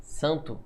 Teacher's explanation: esse n quando ele nasaliza a vogal anterior ele não tem som